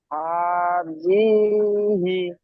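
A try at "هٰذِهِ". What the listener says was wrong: হ্যাঁ, জি কে টান দিচ্ছেন আপনি। জালের নিচে জের আছে দেখেন, হারাকাত, হারাকাতের পড়াকে তাড়াতাড়ি পড়তে হবে না?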